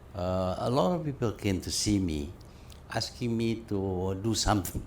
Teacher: they sing song going up and down up and down up and down